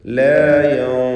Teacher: തി എന്ന് ഏറ്റവും കുറഞ്ഞ തഫ്ഖീമാണ് ത്വാഇൻ്റെ ഉച്ചാരണത്തിൽ വരിക. കാരണം കസ്റായതുകൊണ്ട്. · ലാ യൻതിഖൂൻ സാക്കിന താനൂനും ശേഷം ത്വാഉമാണ്. ഇഖ്ഫ ഹഖീഖി നൽകി മറച്ച് മണിച്ചുച്ചരിക്കുക. മണിക്കലിൽ തഫ്ഖീം വേണം. ശേഷം ത്വാ ആയതുകൊണ്ട് ലാ യൻതിഖൂൻ.